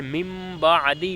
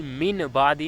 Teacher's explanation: یہاں نون ساکن کے بعد با ہے تو نون ساکن کی آواز کو میم میں بدل جائے گی اور گننا بھی ہوگا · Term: اقلاب